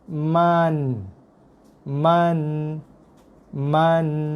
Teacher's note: Tapi baca dia ma satu harakat dulu. Bunyikan dia dengan kadar pendek, satu harakat je.